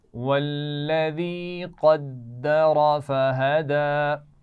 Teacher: قدر، قاف موٹا پڑا جائے گا، دال پہ شد ہے، سختی سے پڑھیں گے · فہدی، دال پر کھڑا زبر ہے تو اس کو تھوڑا سا کھینچ کر پڑھا جائے گا زبر کے مقابلے میں